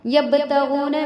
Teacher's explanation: با حرف قلقلہ میں سے، یعنی اس کو پڑھتے وقت آواز جو ہے پلٹے گی